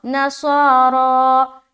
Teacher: صاد بھی موٹا، را بھی موٹا، اور کھینچیں گے بھی کیونکہ کھڑا زبر ہے